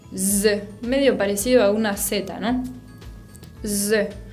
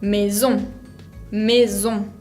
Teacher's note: el otro sonido que puede tener la S, que el castellano no tiene, es como si fuera Z, como un moscardón.